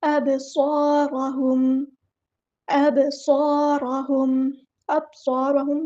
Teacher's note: با کو ہم نے یہاں پہ ہلانا ہے، قلقلہ ہو رہا ہے۔ اب صارہم نہیں پڑھنا، اب صاد میں سیٹی آئے گی، الف مد آ گیا تو ایک الف کے برابر لمبا کرنا ہے، 2 کاؤنٹس۔